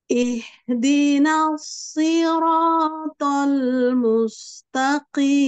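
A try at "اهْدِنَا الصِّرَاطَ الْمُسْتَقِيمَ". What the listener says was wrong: Coba diulang. Ihnya kurang menggema ya. Ada suara gemanya.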